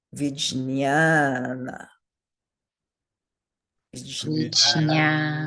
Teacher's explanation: So 2 short letters and the one in the middle is long.